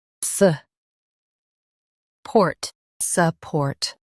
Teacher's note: Stress port and soften suh. Suh. Port.